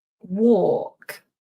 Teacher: The L is silent. We don't pronounce the L.